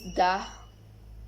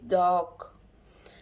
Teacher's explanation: Characteristic alveolars stop and voice.